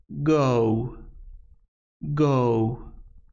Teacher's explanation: It is a voiced velar stop consonant. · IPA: /g/